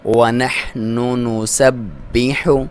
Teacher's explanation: ہا کو باریک، تمام الفاظ کو باریک پڑھیں گے ، باپ دبا کے پڑھیں گے کیونکہ اس پہ شد ہے،